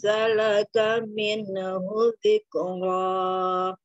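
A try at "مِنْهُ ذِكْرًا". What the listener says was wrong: Minahu, jangan ada minahu. Dikro, dik, tahan aja dikro. Mina, itu dihilangkan minanya. Minhu.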